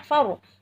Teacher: Karena ro-nya itu bacaan tafkhim. Ro-nya dibaca tafkhim. Artinya dibaca tebal.